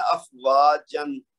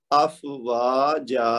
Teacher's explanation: پھر یہ دیکھ لیجیے امن، تو اما، یعنی آخری جو 2 زبر ہیں یا 2 زیر ہوں یا 2 پیش ہوں ان کو، بلکہ یہاں ہم زبر کی خالی بات کر رہے ہیں، تو 2 زبر ہوں تو ان کو رکنے کی صورت میں کیا کریں گے، ایک زبر پڑی جائے گی اور ساتھ الف مد کی طرح 2 حرکت تک کھینچ کر پڑی